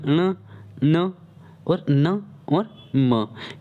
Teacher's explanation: ये ऐसे वर्ण होते साथियों, ये ऐसे वर्ण हैं जिनका उच्चारण करते समय, है ना, जिनका उच्चारण करते समय वायु कैसे निकलती है, नाक से निकलती है ना। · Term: नासिक व्यंजन